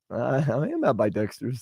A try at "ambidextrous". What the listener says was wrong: You say ambidextrous. It's ambidextrous. It's not ambi. It's not like Ambien.